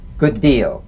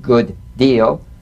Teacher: Identical, D to D, good deal. You don't need to fully pronounce the first D like good deal. Prepare the first, execute the second.